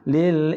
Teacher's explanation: Lil-insan, ikhfa haqiqi. Nun mati bertemu dengan sin. Jadi hukum dia dengung.